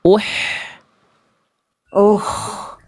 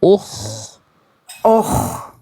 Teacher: Nafasnya lembut berbisik di tengah tenggorokan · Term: H kecil